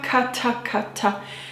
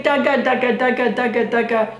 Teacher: But there's another important aspect, which is that if you put your hand in front of your face and you say ta, ka, ta, ka, ta, you feel a little burst of air with every syllable that you say, even if your hand's kind of far away, ta, ka, ta, ka, ta, ka.